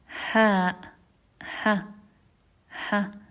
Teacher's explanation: it happens in the deepest part of the throat and the furthest away from the mouth. It's closest to the chest.